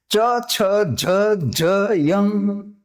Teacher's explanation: કઠણ તાળવું છે ત્યાં જીભનો આગળનો આખો ભાગ ઉપર તાળવાને અડી અને હવાને અવરોધે છે. જેમ કે ચ, જો બોલી જુઓ ચ, તો આ ચ થયો, પછી છ, જો એ જ રીતે ત્યાં જડશે ચ, છ, જ, યંગ. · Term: તાલવ્ય